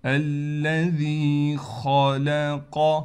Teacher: خا کو موٹا کرنا ہے، قاف کو بھی موٹا کریں گے، اور اس کے دونوں کے درمیان جو لام ہے اس کو ہم باریک کر کے پڑھیں گے۔